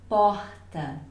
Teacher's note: E o R do carioca, ele é feito lá na garganta